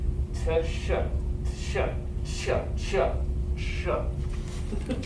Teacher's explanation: The actual way that you will get a ch sound is by combining T with SH.